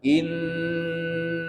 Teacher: Innya tuh ditahan dulu sampai 3 ketukan, 3 harokat. Jadi begitu cara mendengungkannya. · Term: gunnah